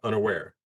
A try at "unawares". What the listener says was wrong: Unawares. There's an S there.